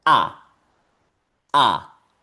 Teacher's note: la E con la R también puede tener otra pronunciación que es solamente sonar A